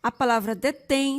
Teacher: A palavra detém, sua sílaba forte é o tem e terminada em, leva-se acento.